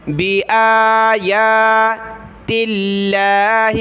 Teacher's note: لفظ اللہ سے پہلے تا پر زیر ہے، لفظ اللہ کو باریک پڑھنا ہے، پتلا پڑھنا ہے